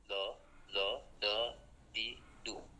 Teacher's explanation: Saya tidak bisa menggunakan lidah daripada kanan dan kiri, jadi saya menggunakan lidah yang paling depan dan ditempelkan daripada langit-langit mulut bagian depan, atau sering kita sebut dengan gusi ya, gusi bagian depan di atas gigi seri atas. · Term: huruf do